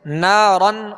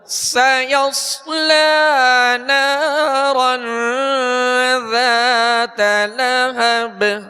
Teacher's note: را کو پر پڑھیں گے، 2 زبر ہے. ذات، ذال کو نرمی کے ساتھ ادا کریں گے، اس میں سختی کی آواز پیدا نہ ہو اور باریک پڑھیں گے.